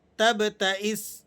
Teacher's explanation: اس لفظ کو با کو قلقلے کے ساتھ آپ نے پڑھنا ہے